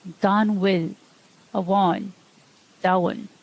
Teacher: When you add shevu to the letter M, in a broad context, it sounds like W